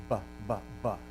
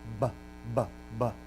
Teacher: So if I say b, it's what we call bilabial. I put my two lips together, and it's plosive